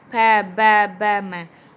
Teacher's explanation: ऊ, ऊ, पै, देखो पै बोलते दोनों होठ मिल रहे हैं ना अपने, ऊपर वाले लिप्स और नीचे वाले लिप्स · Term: ओष्ठ